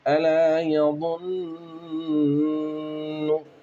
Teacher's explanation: یہاں پر ضا ہے اور نون گنہ ہے، ضا موٹا پڑھنا ہے اور گنے کی ادائیگی پر دھیان دینا